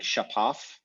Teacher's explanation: something like shapaf with the stress on the final syllable, and then so that previous vowel gets syncopated in some way, and when you put d, it becomes dihapaf, and then it becomes dchpaf.